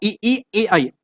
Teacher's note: आप बोलिए जरा, ई ई बोले, ए आई बोले, तो आपकी जीभ बाहर आएगी, आगे बाहर आएगी, तो वो अग्र भाग के अंतर्गत आएगा।